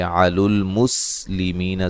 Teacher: سین کو باریک سیٹی سے ادا کیا جائے گا۔ می یا مدہ ہے۔